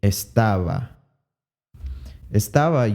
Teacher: estaba uses that bilabial approximant however it has a b in it